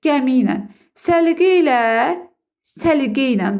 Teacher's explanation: Saitlə qurtardığına görə də arasına bir dənə y bitişdiricisi girdi.